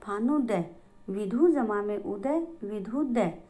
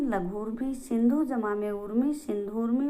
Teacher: दोनों ऊ मिलकर, चाहे कोई भी ऊ आगे आए पीछे आए, लेकिन वो मिलकर बड़ा ऊ बन जाता है